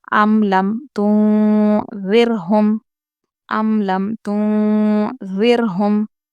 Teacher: ام لم ہم جلدی پڑھ رہے ہیں، میم کی آواز کو ظاہر کر رہے ہیں کیونکہ یہاں پر با کے میم ساکن کے بعد با اور میم کوئی بھی حرف نہیں آیا ہے اس لیے ہم یہاں پر میم کی آواز کو ظاہر کریں گے۔